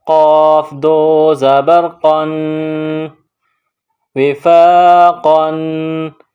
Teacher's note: یہ نقطوں والا موٹا قاف ہے، بڑا قاف، اس کو موٹا پڑھیں گے